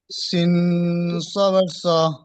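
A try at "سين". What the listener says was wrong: 5 নম্বর সবক মানে অনেক দূরে চলে এসেছেন, আপনি এখনো ভুল উচ্চারণ করছেন অক্ষর। পড়ানোর সময় বলেছিলাম সিন অনেকে পড়ে, কিন্তু আপনি পড়বেন না। আপনি কেমন পড়বেন? সি, জিম অনেকে পড়ে, আপনি কিন্তু পড়বেন না। আপনি কেমন পড়বেন? জি। পড়ছেন সিন, জিন, একদম ভুল, এভাবে একদম পড়বেন না। সি জবর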